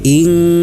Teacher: hukum bacaannya adalah ikhfa dibaca dengan disertai dengung